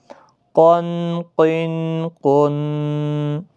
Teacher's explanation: جھٹکے کے ساتھ نکلتا تھوڑا. قاف موٹا ہے.